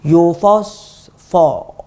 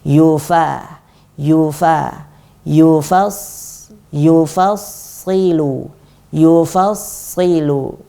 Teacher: Jadi yang harus kita hati-hati, fa-nya harus tetap tipis. Fa-nya harus kita jaga agar dia tetap tipis. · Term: huruf tipis